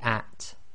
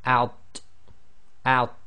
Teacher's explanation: So you have to differentiate between the at, which is light, i.e. tarqiq, and out, which is heavy, so it's tafkhim plus it's qalqala, so it's got an echo as well.